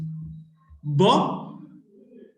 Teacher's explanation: Ba is voiced, bilabial, plosive.